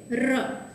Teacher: એક પ્રકારનું કંપન છે એ અનુભવાય છે, જે બીજા કોઈ ધ્વનિમાં અનુભવાતું નથી. આથી માત્ર ને માત્ર ર છે એ જ પ્રકંપી ધ્વનિ છે.